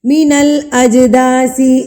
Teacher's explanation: جیم ساکن ہے، ٹھیک ہے، اس پہ ہم قلقلہ کریں گے، یعنی کہ ہم اس کو ہلا کے پڑھیں گے، ترتراہٹ سے پڑھیں گے. اج نہیں کریں گے، آواز کو روک نہیں دیں گے یہاں پہ.